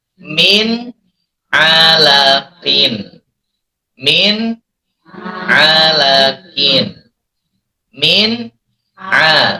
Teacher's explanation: Jadi nun sukun bertemu dengan ain. Nun sukunnya jelas. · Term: idhar